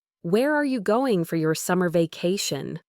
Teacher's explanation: Your voice falls on vacation, signaling completeness of the question. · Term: falling intonation